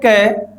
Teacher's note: जब हम क बोलते हैं तो कम वायु बाहर निकालती है इसका मतलब हु अल्प्राण ख तो महाप्राण ग अल्प प्राण घ